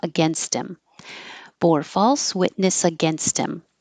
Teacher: against him the T will connect to him, but you'll get rid of the H. So now it sounds like Tim, against him.